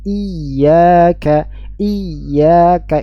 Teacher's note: bedanya membaca huruf ya bertasydid dan tanpa tasydid adanya nabr